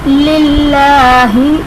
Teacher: اب اس میں جلالت اللہ عز و جل کے لام سے پہلے زیر آ رہا ہے تو ہم لام کو باریک پڑھیں گے